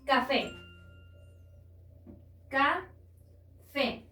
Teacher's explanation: La sílaba tónica o la que suena más fuerte recae en fe, por lo tanto es la última sílaba